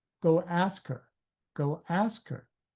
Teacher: But you can also say, go ask her. Go ask her, and focus on ask.